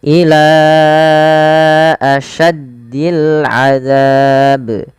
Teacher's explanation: awalnya ila 2 harakat, tapi karena bertemu dengan hamzah kita jadi panjangkan dia 4 harakat